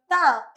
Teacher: നമ്മുടെ പല്ലാണ് ഉപയോഗിക്കുന്നത്. അതുകൊണ്ട് തന്നെ താ വർഗത്തിൽപ്പെട്ട എല്ലാത്തിനെയും നമ്മൾ ദന്ത്യാക്ഷരമായിട്ട് കണക്കാക്കും